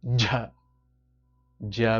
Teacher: J J with a strong gush of breath